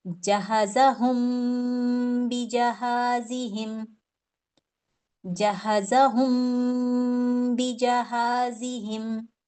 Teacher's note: تو یہاں پہ میں نے میم کو اپنے ہونٹوں میں چھپا لینا ہے، اخفا کرنا ہے اور با کو ادا کرنا ہے. تو میم کو میں ہولڈ کروں گی اور وہ اس کو کیسے کریں گے؟ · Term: اخفاء شفوی